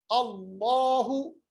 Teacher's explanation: अल्लाह का जो लाम है उसको मोटा बनाइएगा